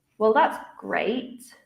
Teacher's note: I used a falling intonation. Well, that's great to show perhaps that I'm being maybe sarcastic. I don't actually think it's great.